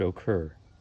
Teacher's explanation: notice that the stress is on occur the second part